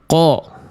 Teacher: Cuman dia terdengar lebih gemuk karena ada pangkal lidah yang naik. Bukan karena memonyongkan mulut. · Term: bunyi tebal